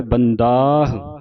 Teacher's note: ਥੋੜਾ ਦ ਨੂੰ ਕੰਨਾ ਜਿਹੜਾ ਲੱਗਾ ਇਹ ਲੰਮਾ ਕਰਕੇ ਉਚਾਰਨ ਕਰਨਾ